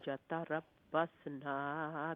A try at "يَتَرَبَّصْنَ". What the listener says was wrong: نہیں نون لمبا نہیں ہے. یتربصنا نون لمبا نہیں ہے.